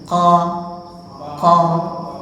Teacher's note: Nah, qaf itu menempel yang bagian lunak. Itulah yang menciptakan seperti ada seperti suatu yang menempel dilepas gitu. Qa. Nah, tapi tidak boleh sampai ke dalam-dalam.